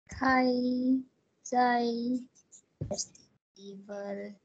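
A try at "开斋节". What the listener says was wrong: Zai. It is zhai.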